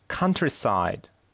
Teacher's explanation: Первый слог под ударением